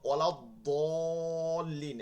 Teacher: দালটা চিকন, দদটা মোটা। দাল হচ্ছে বাংলা দ, স্বাভাবিক। দদটা মোটা করে করতে হবে।